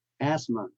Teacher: Asthma, the TH in the middle is silent